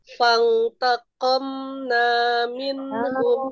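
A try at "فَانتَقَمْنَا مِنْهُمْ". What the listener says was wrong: Fantaqamna. Kurang ditahan.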